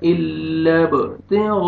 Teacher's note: با قلقلہ double sound آئے گا